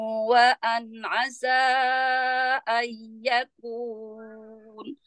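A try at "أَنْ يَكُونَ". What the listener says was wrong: Untuk idgham digunanya ayyakuna. Ayyakuna.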